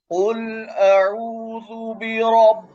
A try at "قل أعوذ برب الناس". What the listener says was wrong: रब्बिन हो गया, पा हो गया। बा, पा, पा जो है वो उर्दू का हरफ है और बा अरबी का है। बिरब्बिन नास।